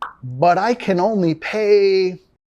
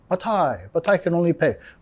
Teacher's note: Cuando una palabra termina con T y la próxima palabra empieza con sonido vocálico, vamos a vincular con la R suave de español.